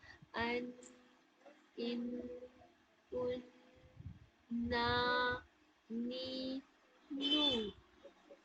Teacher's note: जुबान के सामने वाला जो हिस्सा होता है, वो सामने ऊपर के सामने वाली 6 दांतों की जड़ों में टच करती है